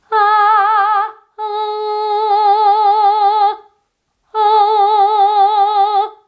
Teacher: Although I'm keeping the tip of my tongue really down, when my throat is closed, it is not an ah anymore.